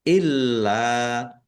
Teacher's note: Lamnya ada tasdidnya dibaca dobel ditekan biar tampak dobelnya. Illa lam fathah berdiri.